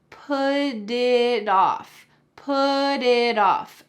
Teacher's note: the T at the end of put is going to change into a D sound in American English · both T's are going to change to D's because they are surrounded by vowels